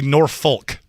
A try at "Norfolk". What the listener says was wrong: No, it's Norfolk. The L is silent. Norfolk, Virginia. They don't say the L.